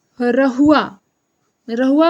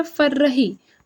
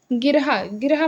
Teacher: ए हर महाप्राण सघोष वर्त से लुंठित व्यंजन आए